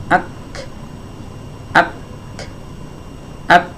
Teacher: pas lepas itu yang keluar bukan suara, tapi nafas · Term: huruf kaf